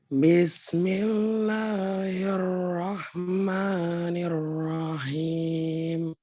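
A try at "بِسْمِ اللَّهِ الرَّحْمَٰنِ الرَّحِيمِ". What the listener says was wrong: Alhamdulillah, ini sudah benar.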